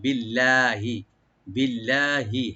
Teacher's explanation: আল্লাহ জালাল এখানে আমরা লাইট করে পড়বো ইনশাআল্লাহ, এখানে মোটা হবে না বা ডিপ হবে না। বিল্লাহি, বিল্লাহি, হে বলবো না, হি বলবো, বিল্লাহি, আল্লাহর উপরে।